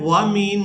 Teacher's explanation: تو ہم نے اخفا کی آواز کو ناک میں چھپا کر ادا کرنا ہے۔ وَمِن، یہ ہم آواز کو ناک میں چھپا رہے ہیں۔